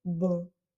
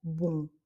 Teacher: Je ne ferme pas les lèvres, je ne prononce pas le M, je dis simplement bon, de manière un petit peu rebondie comme ça par rapport à un bon en français qu'on coupe, qui est très court et encore une fois très clair. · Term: son nasal